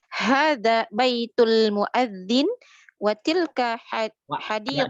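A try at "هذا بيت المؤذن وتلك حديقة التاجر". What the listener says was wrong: Dibaca harokatnya. Harokatnya dibaca, harokat terakhirnya.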